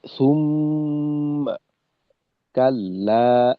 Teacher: আমরা কিন্তু এক আলিফের থেকে গুন্নাতে সময় একটু বেশি দেব